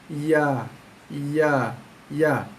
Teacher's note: Ya kawasan tengah lidah. Kawasan tengah lidah, naikkan sikit dengan lembut, naik ke atas, menghampiri langit tengah dalam mulut kita, bunyinya, keluarnya bunyi ya.